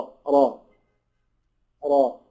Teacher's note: الراء دي مفتوحه يبقى تفخم